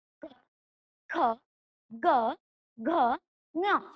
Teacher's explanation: ಕ ವರ್ಗದ ಅಕ್ಷರಗಳು ಕಂಠ ಭಾಗದಲ್ಲಿ ಹುಟ್ಟುವುದರಿಂದ ಅವು ಕಂಠಾಕ್ಷರಗಳು ಕ ವರ್ಗದ ಅಕ್ಷರಗಳು ಗಂಟಲಿನಲ್ಲಿ ಗಂಟಲಿನ ಭಾಗದಲ್ಲಿ ಹುಟ್ಟುತ್ತವೆ ಆದ್ದರಿಂದ ಅವು ಅಕ್ಷರಗಳು ನೋಡಿ